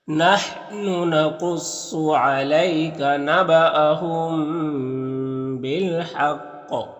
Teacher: اور یہاں پر جب وقف کریں گے تو قاف کا زیر سکون سے بدل جائے گا، تو قاف میں قلقلہ ہوگا کیونکہ قاف حروف قلقلہ میں سے ہے اور اس کے اوپر وقف کرنے کی وجہ سے سکون آ جا رہا ہے تو قلقلہ ہوگا، یعنی قاف کو ادا کرتے وقت اس کی آواز اپنے مخرج سے ٹکر کھا کر الگ ہو جائے گی